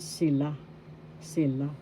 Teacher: first syllable si second syllable la the second syllable has the accent